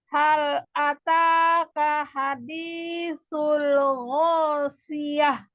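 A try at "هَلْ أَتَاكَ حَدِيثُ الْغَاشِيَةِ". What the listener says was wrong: Nah, tanya terlalu panjang. Hal ataka ta. Nah, 2 harokat saja.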